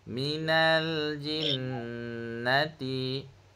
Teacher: Dekat nal yang awal tu pak cik jangan dengung nah. Satu harakat saja.